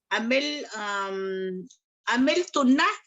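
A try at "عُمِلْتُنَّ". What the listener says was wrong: बिल्कुल ठीक है, लेकिन आइन पे आप जबर बोल रहे हो। उमिल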